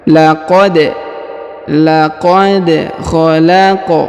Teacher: Perhatikan huruf dal berharokat sukun, ya, maka kita pantulkan · Huruf qaf, ya, juga berharokat sukun, maka kita pantulkan, ya, karena huruf qaf dan huruf dal termasuk huruf-huruf qalqalah atau huruf-huruf pantul apabila berharokat sukun, ya.